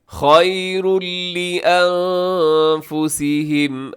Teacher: خیرن ہے اور اس کے بعد لام ہے تو یہاں بھی ادغام ہوگا بغیر غننے کے